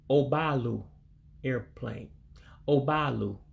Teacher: this is one where you have to drop the E in Elu, which looks like an E in English.